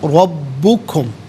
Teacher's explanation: قالو رب علیحدہ ہے، کم علیحدہ ہے، ملا کر پڑھیں گے۔ ربکم، را پر زبر، را کو پر کر کے پڑھیں گے، با مشدد، با کو جماؤ کے ساتھ پڑھیں گے